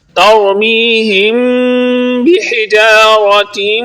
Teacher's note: ترمیہم بحجارۃ پر اخفاء شفوی ہو رہا ہے، اس لیے یہاں پر غنہ کریں گے